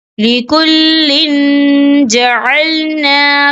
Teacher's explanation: تو ہم یہاں اکفا کریں گے. تنوین کی آواز کو ناک میں چھپائیں گے